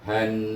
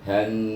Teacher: maka kita kena baca huruf nun bertasydid dengan wajib bergunah, bunyinya han. Nampak han.